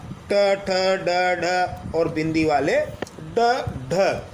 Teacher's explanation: इसे उच्छित व्यंजन कहते हैं, यानी जीभ झटके से वापस आती है, यानी उछलती हुई आती है, उच्छित। सबसे पहले जीभ ऊपर वाले जबड़े के शीर्ष स्थान यानी मूर्धा को स्पर्श करेगी, झटके से वापस आती है उछलते हुए, इसलिए इन्हें उच्छित व्यंजन कहते हैं।